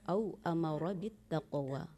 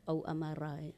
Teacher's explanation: Kemudian rohnya, roh tafkhimnya itu ditebalkan. Au amaro. Ya, au amara bittaqwa.